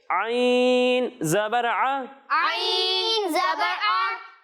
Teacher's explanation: जब हम आइन की अदायगी करेंगे तो इसे हलक के दरमियाने हिस्से से पढ़ेंगे।